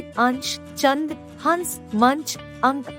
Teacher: अनुस्वार के उच्चारण में नाक से सांस अधिक निकलती है तथा मुख से कम